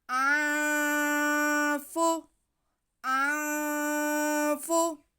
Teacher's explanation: ہم نون کی آواز کو ناک میں چھپا کے پڑھیں گے۔ آنفو، آنفو، اس کے بعد سین پہ زبر، ہا پہ پیش اور میم ساکن، کھینچنا کسی کو نہیں ہے۔